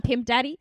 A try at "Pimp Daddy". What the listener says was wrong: Daddy. You gotta put a H on the end of it, not a Y. Daddy. I love you, Daddy.